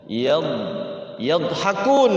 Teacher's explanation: Nah, si dnya tidak boleh mantul lagi ya disimpan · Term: d sukun